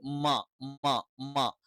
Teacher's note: മ എന്ന് പറയുന്നത് രണ്ട് ചുണ്ടിൽ നിന്നാണ്. രണ്ട് ചുണ്ട് മൃദുലമായി ബ എന്ന് പറയുന്ന പോലെ ശക്തമായി അടച്ചു വെക്കണ്ട